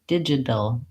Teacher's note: So this is our flap T, where we go up to the position for the D and T, our voice is on, but we don't build up a lot of air